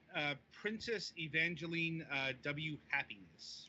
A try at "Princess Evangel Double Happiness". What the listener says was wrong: Yeah, it's Princess Evangel Double Happiness. The W is read as double.